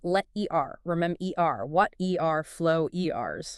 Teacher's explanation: So the R at the end of words needs to be really clear and strong. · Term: strong ER ending